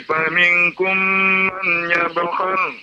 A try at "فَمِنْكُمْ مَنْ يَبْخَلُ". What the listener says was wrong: Faminkum mai, bukan man. Mai ada idgham namanya Pak, idgham.